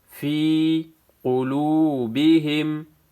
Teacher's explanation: واو ساکن پہلے پیش ہے، واو مدہ ہے، ایک الف کے مقدار کھینچنا ہے۔